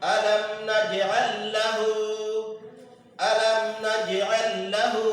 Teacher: لام ساکن کو بعد والے لام میں ادغام کر کے پڑھا جائے گا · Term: ادغام مثلین